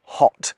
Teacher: if I say “hot” I’m using a vowel sound - that “oh” - that a lot of American viewers will never use